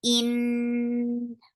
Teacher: Noon will get sifa of gunna, and this is akmal gunna. In. Fatha is short.